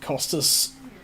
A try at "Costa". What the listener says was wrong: No, It's got an S on the end that's silent.